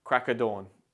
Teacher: In natural speech, when we say crack of dawn, quickly and informally, the of sound can often become subtle or even omitted altogether. In other words, the of is replaced with the schwa sound